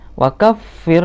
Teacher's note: kafir ini fa-nya tasdid ya, ditahan. Wa kaffir, nah seperti itu, maksudnya di double ya fa-nya.